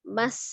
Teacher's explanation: Sifat sin memiliki sifat as-safir ya atau suara desis. Maka tampilkan desisannya.